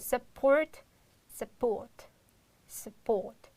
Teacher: You will change into schwa sound the first u sound